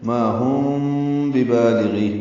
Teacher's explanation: ما الف مدہ ہے، ہم میں میم ساکن کے بعد با آنے کی وجہ سے اخفاء شفوی ہے